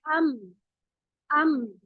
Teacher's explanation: मीम दोनों होठों के तसादुम से अदा होता है अम। जब आप दोनों होठों को मिला लेते हैं तो तसादुम होता है अम, 2 होठ मिल रहे हैं आपस में, तसादुम हो गया अम।